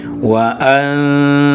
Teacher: bunyi an itu memang mestinya lewat rongga hidung juga karena itu dengung